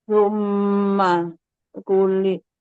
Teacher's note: Ditahan dengungnya tiga harakat di rongga hidung. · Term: gunah musyaddadah